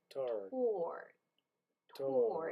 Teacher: it's a strong aspirated T. So it feels like there is a little H after.